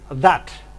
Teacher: There was a short A, slightly backed, as in that